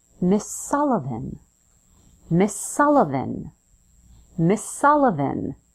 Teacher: Notice when I say Miss Sullivan, I connect the final S in Miss to the S at the beginning of the word Sullivan, so it feels like one word. Miss Sullivan, Miss Sullivan, Miss Sullivan.